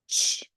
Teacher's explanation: Touch your voice box, say ch. Oh, it's voiceless. Ch. It's a stop sound.